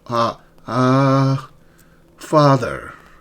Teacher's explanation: notice your mouth is fully open and tongue is in low back. Uh, it's a deep uh uh father.